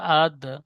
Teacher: এখানে দালের উপর সাকিন এসেছে হরফে কলকলা কলকলা হবে